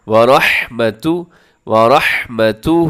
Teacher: را کے اوپر زبر ہے تو اپنے را موٹی پڑھنی ہے، ہا کا خیال رکھنا ہے.